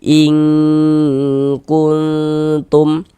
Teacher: Ing bagian ing itu kita tahan panjangan sejenak kita dengungkan · Yang dibaca samar itu bunyi nun sukun atau bunyi tanwinnya itu yang kita samarkan. Kemudian kita dengungkan atau kita gunahkan. Jadi kita panjangkan sejenak begitu. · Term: ikhfa hakiki